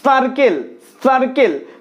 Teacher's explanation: দন্ত স উচ্চারণের ক্ষেত্রে জিভ দাঁতকে স্পর্শ করছে।